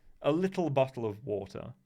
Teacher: you've got this what's called the non-rhotic uh way of speaking where i don't pronounce the r after a vowel